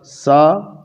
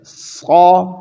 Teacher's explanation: تو سین کی آواز پتلی آئی سا، صاد کی آواز موٹی آئی صا